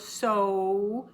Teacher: Long O, so. It's very, very round, like you're blowing through a fat straw.